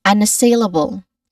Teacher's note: The main stress is the third syllable, sail, but we start with the first syllable, un, which has, a soft, short, weak vowel sound here.